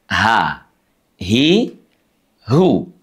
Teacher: Huruf ha pada kata ihdina diucapkan dari pangkal tenggorokan kita.